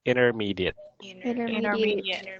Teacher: We should make the first T sound like a soft D.